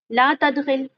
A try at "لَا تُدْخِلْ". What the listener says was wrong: زبر کے ساتھ پڑھا ہے, پڑھیں دوبارہ.